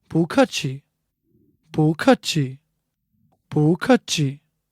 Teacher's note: Like I said before, 不 normally is fourth tone, but when followed by another fourth tone, it becomes second tone.